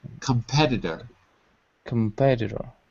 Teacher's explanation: So in American English, the T is a D, like dog.